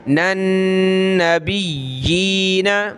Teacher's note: نون نون ملیں گے آپس میں، یہاں غنہ کریں گے